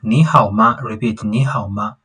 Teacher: the tone for ni hao here on the ni, it is a third tone